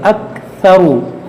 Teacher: हमज़ा काफ ज़बर अक, सा ज़बर सा, अक्सा, रा पेश रू, अक्सरू, अक्सरू, यहाँ पर भी देखिए रा पर पेश है, इस रा को मोटा पढ़ेंगे